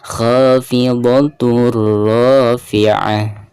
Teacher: Lalu berhadapan dengan salah satu huruf idgham, di sini huruf ra dan termasuk idgham bila guna. Jadi bacaan tanwin tersebut harus dimasukkan ke ra ya.